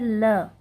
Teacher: ल को पार्श्विक वर्ण कहा गया है, क्योंकि इसके उच्चारण के समय जो वायु रहती है वो जीभ के दोनों ओर से बाहर आती है।